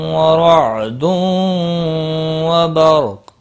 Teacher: وہ حرف مستعلیہ ہے، پور پڑھا جائے گا، میم کے اوپر کھڑی زبر ہے، 1 الف کے برابر کھینچ کر پڑھیں گے۔ تنوین کے بعد واو آیا ہے، ادغام با غنہ ہوگا، را زبر کی وجہ سے پور پڑھا جائے گا